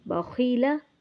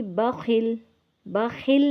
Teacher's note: خا کو گول، ہونٹ کو گول کر کے اس کو تھوڑا موٹا کرنا ہے، بخیلا۔ تو وقف میں بھی بخل، بخل نہیں، ہونٹ کو گول کر کے اس کو پڑھنا ہے، ہونٹ کو کھلا کر کے نہیں پڑھنا۔